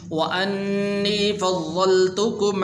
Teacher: بعض حضرات یہاں پر غلطی کرتے ہیں اور پڑھتے ہیں فضلتکم، فضلتکم نہیں ہے کیونکہ ضاد کے اوپر شد موجود ہے